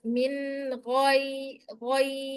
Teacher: izhar dibaca jelas min goi goi bukan gai ya, tapi go ya tebal.